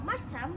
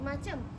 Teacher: Kesalahan bunyi pada kata macam yang diucapkan menjadi macem, yaitu perubahan fonem a menjadi fonem e